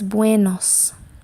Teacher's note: Buenos. So when you say it fast, that ue sounds like a W. Bue. Okay, so it's buenos.